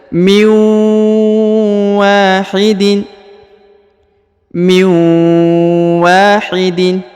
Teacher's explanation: nun sukun bertemu wau ditahan dan ditekan didengungkan dua harakat